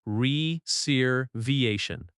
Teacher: The stress falls on the third syllable. re-ser-va-tion That va sound is strong.